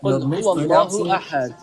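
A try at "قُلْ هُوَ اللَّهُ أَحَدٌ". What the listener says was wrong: You're mispronouncing the qaf. Please say it correctly.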